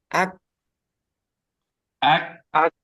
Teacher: Sudah terbukti ya bahwa syiddah ini hurufnya suaranya tertahan.